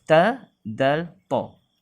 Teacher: Huruf ta dal ta ialah hujung lidah dia naikkan ke atas, terkena kepada pangkal ataupun gigi kacip atas kita, pangkal gigi kacip atas. Hujung lidah yang ke tengah.